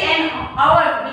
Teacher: we say an hour because the H is silent in the hours